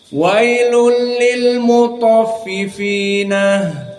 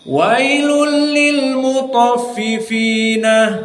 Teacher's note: Maka di dalam ayat yang pertama ini, wailul lil mutaffifina, maka wailun dari qiraah Ya'qub di sini dimasukkan tanwin kepada lam menjadi idgham, wa huwa bila gunnah